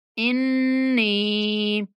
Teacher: नून पर गुन्ना करते हुए नून को 1 अलिफ तक खींचेंगे।